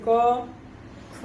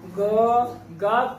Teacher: क ख कहने में बहुत ही मामूली सा घोष होता है, लेकिन गा का उच्चारण करते समय ग गा कहते ही घोष की स्थिति जो है वो उत्पन्न हो जाती है